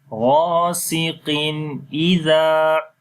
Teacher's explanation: So here it is Izhar. That's why we are making the clear sound of Noon